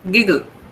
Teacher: we have two sounds, same sounds put together in the spelling, but the sound is single